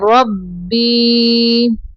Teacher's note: قل هو ربی را کو پر پڑھنا ہے